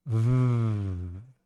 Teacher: Uh, as we discussed, the lower lip going to the cutting edge of the upper teeth for the sound F, the unvoiced sound. adding my voice VV.